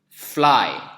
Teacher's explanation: Ada bunyi f yang tidak bergetar pita suara kita.